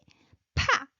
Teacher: Na. And the next one is pa, like a burst of air